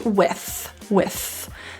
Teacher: It's typically a voiceless TH, with. There may be some people who pronounce it as with, and that's cool.